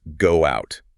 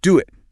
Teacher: >> Because your lips are already in that tight circle, the easiest laziest way to transition to the wide ah sound in out is to glide through a W sound as you open your mouth. So it actually becomes go out.